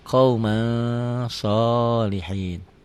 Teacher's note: Tulisan dan bacaan beda. Ditulisnya ada n-nya, dibacanya n-nya tambah g jadi eng. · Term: ikhfa